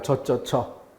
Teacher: 센 소리이기 때문에 그 뒤에 여 모음이 단모음으로 어로 소리 난다. 바로 지읒, 쌍지읒, 치읒이 센 소리이기 때문에 모음이 약화된다는 면에서 한번 본 바 있습니다.